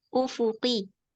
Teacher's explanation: Berikan sifat jahar pada qaf.